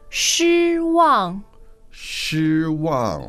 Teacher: that is first and fourth tone